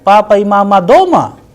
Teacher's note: the sound at the end is rising because i am asking a question